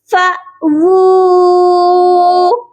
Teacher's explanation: بہت سے لوگ واو کے اوپر جب الٹا پیش ہوتی ہے تو او کی آواز کرتے ہیں جو کہ حمزہ کے ساؤنڈ سے نکلتی ہے. یہاں پر واو کی آواز او نہیں آئے گی بلکہ وو آئے گی